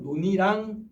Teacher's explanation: 니은 첨가가 적용되는 게 아니라 연음만 일어나서 논이랑 이렇게 가야겠죠